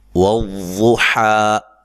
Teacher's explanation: ضاد کو اس کے مخرج سے نکالنا ہے، موٹا ادا کرنا ہے ، حا کو اس کے مخرج سے